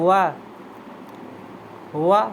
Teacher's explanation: दंत प्लस ओस्ट दांतों और ओठों से बोले जाने वाले